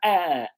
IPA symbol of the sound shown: ʌ